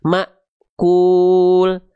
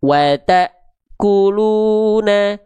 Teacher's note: huruf-huruf yang ketemu hamzah sukun itu seperti seolah terhenti atau terhentak karena hamzah sukunnya punya sifat syiddah